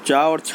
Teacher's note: तो दोस्तों चा और छा जो है वो तालु के अंतर्गत आते हैं, उनका जो उच्चारण स्थान है वो तालु है